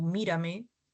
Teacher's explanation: Tenemos las esdújulas o paroxítonas. Eh, tienen la mayor fuerza de voz en la antepenúltima sílaba. Todas se tilan sin excepción, como mírame sobre esdújulas presentan la mayor fuerza de voz en la antepenúltima sílaba, antes de la antepenúltima sílaba, corrección.